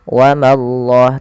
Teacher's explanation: Pada lafal Allah bila didahului dengan fathah maka Allahnya tebal. Wa mallah, tapi ma jangan ikut tebal.